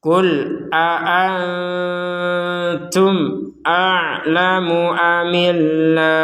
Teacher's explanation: Ada mim sukun di sini bertemu hamzah, maka kita membacanya dengan jelas.